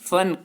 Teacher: जैसे फन, फन का अर्थ होता है कला, और इनका उच्चारण करने के लिए जब हम बोलते समय ऊपर के दांत और नीचे के होंठों को आपस में मिलाते हैं तो इसका उच्चारण निकलता है। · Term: नुक्ता